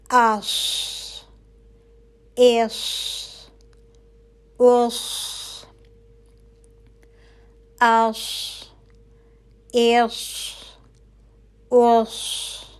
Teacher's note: हमें महसूस हुआ कि हर्फ साद की आवाज मोटी हो रही है ठीक है तो सद जो है वो मोटा हर्फ है तो · تو صاد جو ہے وہ موٹا حرف ہے، تو اس کی آواز جو ہے وہ موٹی ہوگی، اور حرف موٹا کرنے کے لیے کیا ہوتا ہے کہ زبان پیالہ نما بن جاتی ہے، ٹھیک ہے؟ پیچھے سے بھی اوپر اٹھ جائے گی زبان کی جڑ، اور آگے سے بھی، اور بیچ میں جو ہے وہ پیالہ سا بن جائے گا۔